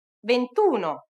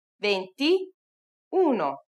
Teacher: attention since the number is venti trenta quaranta and so on drop the final vowel before uno and otto because they both begin with a vowel